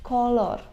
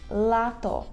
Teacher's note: польський звук л Він завжди м'який у поляків